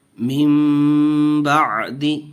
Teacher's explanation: دیکھیے ناظرین یہاں بھی نون ساکن کے بعد اقلاب کا جو با ہے حرف وہ آیا ہوا ہے، اس لیے یہاں بھی اقلاب کا قاعدہ ہوگا، گننا کر کے پڑھیں گے. یہاں بھی وقف کریں گے تو ساکن کر کے کریں گے.